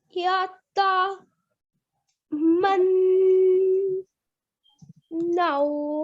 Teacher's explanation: we don't prolong the noon. We don't prolong, we only hold the sound.